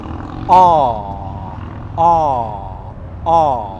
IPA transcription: ɑː